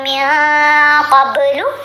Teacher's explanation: نون کے اوپر ہم نے احفا کیا, نون ساکن کے بعد قاف ہے, قاف حروف احفا میں شامل ہے تو ہم نے نون کی آواز کو ناک میں چھپا کر پڑھنا ہے